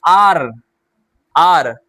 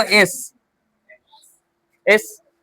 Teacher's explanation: आर तो लग रहा है गले से निकल रहा है, लेकिन आप बोलो एस, एस जबान से निकल रहा है। आर बोलो, यहां से निकल रहा है, आर निकला।